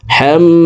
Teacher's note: তো এই জবরওয়ালা হাটি তাসদিদওয়ালা মিমের সাথে 3 সেকেন্ড পরিমাণ গুন্নাহ করে পড়ব। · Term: ওয়াজিব গুন্না